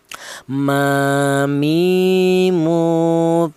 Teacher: Sekarang huruf mim. Huruf mim ini keluarnya huruf berasal dari kedua bibir yang rapat